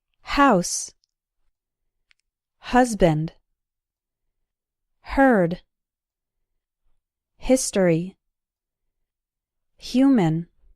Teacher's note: The H sound is very soft but it should be present